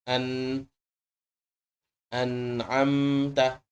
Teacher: ini adalah huruf gunnah gunnahnya getarannya keluar dari hidung tapi hurufnya keluar dari bibit hurufnya sama seperti huruf nun hurufnya